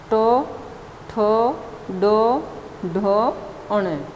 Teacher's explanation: ट वर्ग में जो ध्वनियाँ आती हैं वो हैं मूर्धन्य स्पर्श